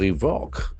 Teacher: There are two syllables, accent falls on second syllable.